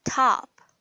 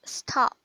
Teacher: In the beginning of the word, you will get an aspirated T, but you won't get an aspirated T when it appears after a consonant.